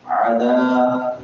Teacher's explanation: ذال نرم حروف میں سے ہے، نرمی سے ادا کریں گے اور الف مدہ ہے، اس کو لمبا بھی کریں گے